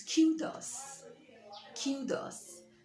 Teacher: notice that the stress is on the first syllable